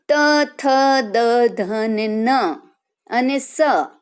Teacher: બોલીએ ત્યારે આપણી જીભ છે એ દાંતને અડે છે, બરાબર. એટલે એ બધા વર્ણોને કહેવાય દંત્ય, બરાબર.